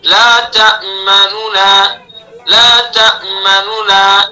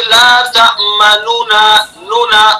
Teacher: पहला जो नून है उसको आहिस्ता पढ़ेंगे। यानी उसकी हरकत का हिस्सा अदा करेंगे।